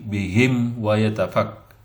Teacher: mimati bertemu dengan wawu, izhar syafawi